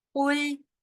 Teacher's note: قاف جو ہے وہ پر پڑھا جائے گا اور لام باریک ہوگا. یہ خیال رکھنا ہے کہ قاف کو پر پڑھتے پڑھتے لام جو ہے وہ پر نہ ہو، وہ موٹا نہ ہو جائے.